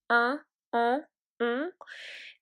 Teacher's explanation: These are vowels that we produce using our nose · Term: nasal vowels